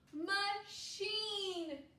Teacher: this A is a schwa vowel. It's lazy.